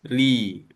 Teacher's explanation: Ra ketika di baris bawah dibaca tipis.